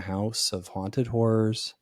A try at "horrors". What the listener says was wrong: When that word is one syllable, it means something different to me.